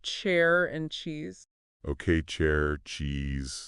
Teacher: there's a stop there that's what makes it different from sh